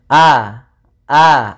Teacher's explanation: tertahan suara tertahan nafas kita ya jahar itu tertahan nafas sehingga tidak boleh ketika melafalkan Hamzah ada nafas yang dikeluarkan a a itu tertahannya maka dinamakan jahar Kemudian yang kedua itu